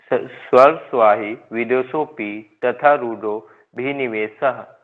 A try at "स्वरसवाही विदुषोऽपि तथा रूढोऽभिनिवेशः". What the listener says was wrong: इकट्ठा बोलिए इसको, रुक रुक के मत बोलिए।